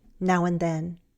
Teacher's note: I'm also losing that D in and.